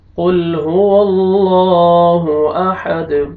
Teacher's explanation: یہاں پہ آپ نے لام کو موٹا کرنا ہے کیونکہ اللہ تعالیٰ کے نام سے پہلے زبر ہے، اور یہاں پہ آپ نے دال قلقلہ کرنا ہے، ڈبل ساؤنڈ آئے گا، قل هو اللہ احد۔